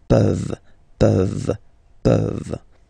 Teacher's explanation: this ENT ending, you write it, you don't pronounce it